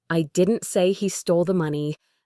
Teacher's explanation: And finally, if I say I didn't say he stole the money, the stress on money means he stole something else entirely, not money